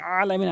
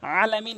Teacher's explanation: আইনটি হলকের মাঝখান থেকে চাপ দিয়ে বলতে হবে